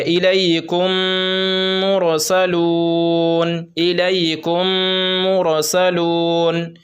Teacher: میم ساکن کے بعد میم آئے تو میم کو میم سے ملا کر غنہ کے ساتھ پڑھا جائے گا۔ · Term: ادغام شفوی